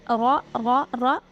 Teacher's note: را کے اوپر زبر ہو تو را کو ہمیشہ پر پڑھتے ہیں، موٹا کر کے پڑھتے ہیں، اور پیش ہو تب بھی.